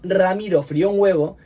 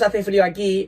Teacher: en frío la vocal cerrada, la I sí que es tónica, por eso se produce un hiato